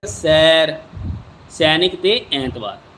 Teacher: ਉਸ ਤਰ੍ਹਾਂ ਦੇ ਸ਼ਬਦ ਬਣਾ ਕੇ ਦੇਖੋ ਫਿਰ ਬਾਰ ਬਾਰ ਪੜ੍ੋ ਵੀ ਉਹਦਾ ਉਚਾਰਨ ਕੀ ਹ ਮੈਂ ਆਵਾਜ਼ ਕਿਹੜੀ ਕੱਢਣੀ ਹ ਮੂੰਹ ਦੇ ਵਿੱਚੋਂ ਠੀਕ ਹ ਐ ਇੱਥੇ ਹੁਣ ਐ ਦੀ ਆਵਾਜ਼ ਕੱਢਣੀ ਆ ਅਸੀਂ ਠੀਕ ਹ ਇਹਨੂੰ ਏ ਨਹੀਂ ਪੜਨਾ ਗਾ ਐ ਦੀ ਆਵਾਜ਼ ਆਏਗੀ